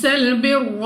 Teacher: را پر زبر را کو پر یعنی موٹا پڑھا جائے گا۔